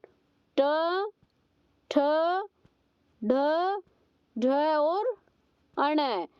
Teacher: जब हम इनका उच्चारण करते हैं तो हमारी जीभ का अगला भाग है वो तालु के सबसे ऊंचे भाग को स्पर्श करता है। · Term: मूर्धन्य वर्ण